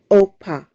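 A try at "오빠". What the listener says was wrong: Pa. That I hear the P sound. This is double B. Oppa. So one syllable. Oppa.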